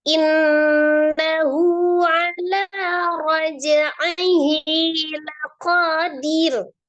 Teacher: Innahu ada nun tasdid, nun musaddadah, wajib ghunna akmal